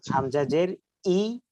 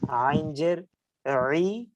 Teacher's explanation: আইনের উচ্চারণ হলকের মাঝখান থেকে হচ্ছে ওটা হবে ই হামজার উচ্চারণ হলকের একদম শুরু থেকে হচ্ছে সেটা হবে ই